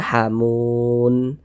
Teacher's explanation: Ini kan kalau kita berwakaf di huruf nun kita baca hamun. Kalau berhenti di huruf nun jangan dibaca hamuna, jangan.